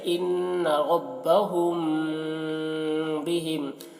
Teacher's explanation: میم ساکن کے بعد با آئے تو غنہ کے ساتھ اخفا ہوگا، اس کو اخفاء شفوی کہتے ہیں